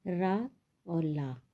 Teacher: दंतमूल यानी दांत के मूल भाग से रा।